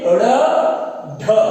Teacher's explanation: जैसे ड़, ढ, बोल के देखिए, ड़, ढ। जीभ है वो ऊपर तालु से और मूर्धा से टकराती हुई इसको बाहर फेंकती है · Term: उत्क्षिप्त व्यंजन